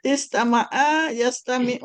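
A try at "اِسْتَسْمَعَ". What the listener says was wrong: Istas, istas, dua sin. Bukan, itu wazan 6. Ibu sekarang wazan 8. Istas, ada dua sin. Istas, maaf. Istas, maaf.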